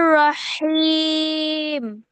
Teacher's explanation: ফেসের বামে জজম হলো ওয়াও, ওয়াও, তারপরে হচ্ছে একটা একটা হরফ আসছে যেটার মধ্যে ওয়াকফ করা হয়েছে, যার কারণে এটা মাদা আরজি, 3 আলিফ টেনে পড়তে হবে